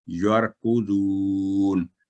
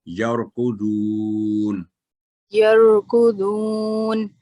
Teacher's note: جب را ساکن سے پہلے حرف پر فتح ہو تو موٹا کر کے پڑ جائے گا تفخیم کے ساتھ